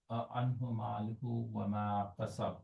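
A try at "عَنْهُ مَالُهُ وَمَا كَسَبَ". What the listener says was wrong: So why don't you make this noon long? So anhu, and then why is this who longer? Because of the wow there.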